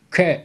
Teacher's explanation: Kaf harfini de dil kökünden K şeklinde okuyoruz